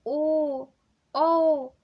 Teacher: ओ, औ, सब में होठ पूर्ण रूप से वृत्त या गोल बन जा रहा है